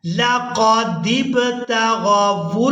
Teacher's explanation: لقد ابتغوا الفتنة، لقد قاف کو پورا ادا کریں گے، اس کے بعد دال کو با ساکن کے ساتھ ملائیں گے اور یہاں با پر ہم نے کرنا ہے قلقلہ۔ با کو ادا کرتے ہوئے آواز میں جنبش پیدا ہوگی، اسی کو قلقلہ کہا جاتا ہے